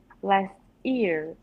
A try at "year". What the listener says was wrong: Yeah, careful. That almost sounded like ear. Year. Last year.